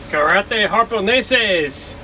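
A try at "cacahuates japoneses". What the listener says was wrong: Japoneses. There's no R in that. Japoneses. Japonese.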